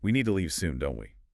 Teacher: Your voice goes down at the end on the tag. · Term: falling tone